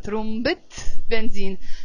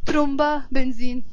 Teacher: a noun plus another noun, we will pronounce the temarbuta, trumbet benzine, not trumba benzine.